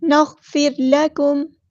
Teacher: لام باریک پڑھیں گے، لائٹ لیٹر ہے